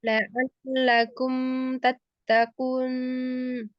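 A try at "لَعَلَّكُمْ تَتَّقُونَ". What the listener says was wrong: Eh, bukan nunnya, tapi huruf ku-nya, huruf qaf, kun, kun.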